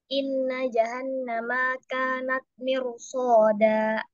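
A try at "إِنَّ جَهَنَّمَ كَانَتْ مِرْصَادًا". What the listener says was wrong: kira-kira apa yang terasa salah jahanam maanya pendek ya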